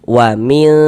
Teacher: A cara membaca ikhfa hakiki bunyi nun soqon atau bunyi tanwinnya itu dibaca samar dengan kita bersiap-siap masuk ke dalam huruf ikhfanya kemudian didengungkan, disamarkan juga didengungkan, dighunahkan.